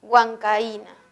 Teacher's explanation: En la palabra huancaína encontramos dos vocales diferentes. La A es una vocal abierta, la I es una vocal cerrada. La I tiene la mayor fuerza de voz, por lo tanto en huancaína sí encontramos hiato acentual.